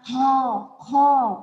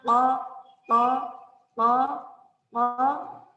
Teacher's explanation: Kalau masih ada angin, ada kerasa angin di telapak tangannya, itu belum pas, belum dapat makhrajnya. Tapi kalau bunyinya ko, nggak ada anginnya, nggak ada nafasnya, itu udah cip, udah bagus.